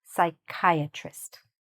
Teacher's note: the ch is not pronounced like a ch or anything, it's pronounced more like a k